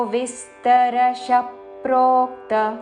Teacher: ప్రోక్త క్త హ్రస్వము. ప్రోక్త అని దీర్ఘము పలకకూడదు.